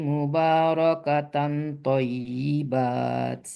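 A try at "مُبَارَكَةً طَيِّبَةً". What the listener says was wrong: Anda bukan thayyibat dulu, itu kan ta marbutah matinya ha ya. Thayyibah bukan thayyibat.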